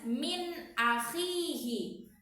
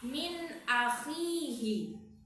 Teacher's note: Dia tidak boleh didengungkan atau dileburkan. Gak boleh samar-samar. Dia harus jelas. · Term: izhar